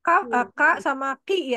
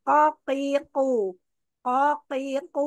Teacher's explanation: pangkal tenggorokan bagian atas ketemu sama langit-langit yang lunak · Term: huruf q